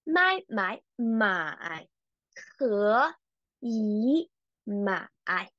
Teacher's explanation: we just keep the last one as the third tone and change all of them the rest of them into the second tone